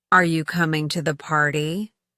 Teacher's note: pay attention to how the pitch rises at the end of the sentence